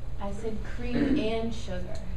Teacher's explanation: you should emphasize and for the listener to hear that it's something different that you want. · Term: stressed for emphasis